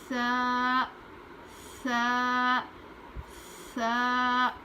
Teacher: ایسی آواز نہیں ہونی چاہیے. سیٹی کی جیسی آواز ہوتی ہے سین کی ویسی نہیں بلکہ ہلکی سی آواز